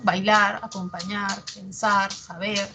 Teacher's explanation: el sufijo ar atrae el acento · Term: agudos